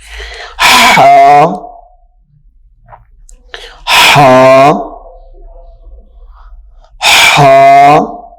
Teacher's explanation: اس کو ادا کرتے وقت پہلے سانس کی آواز نکلے گی پھر یہ حرف ادا ہوگا ہا، ہا۔ یہ حلق سے ادا ہوگا، ہا حلق سے ادا ہوگا۔